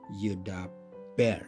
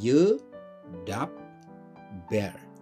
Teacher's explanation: Jadi pada konsonan kedua ada penggandaan konsonan. Bet itu akan dibaca double atau akan ditulis double menjadi yedap, lalu ada ber.